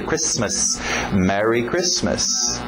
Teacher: O T é mudo, não pronuncia esse T.